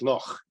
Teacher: that ch sound in words like loch at the back of the throat